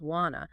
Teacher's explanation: So want to becomes wanna. The schwah replaces the full vowel sound in to · The t sound at the end of want usually disappears completely.